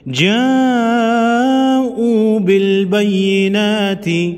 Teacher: بڑی مد کو 5 الف کے مقدار یعنی 5 سیکنڈ لمبا کریں گے۔